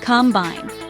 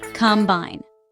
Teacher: This word has 2 syllables, combine. The stress falls on the second syllable.